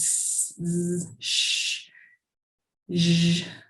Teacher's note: we hear like a turbulent kind of sound with those fricatives.